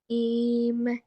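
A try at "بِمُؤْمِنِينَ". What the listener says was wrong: এম বলো কেন? এটা নুন, এন। বি, মু, মিনি।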